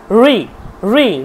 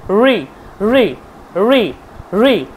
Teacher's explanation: জিহ্বাটা ভাঁজ হয়ে ঠিক ওপরের দিকে উঠে যাচ্ছে, একদম নাকের দিকে সোজাসুজি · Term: মূর্ধা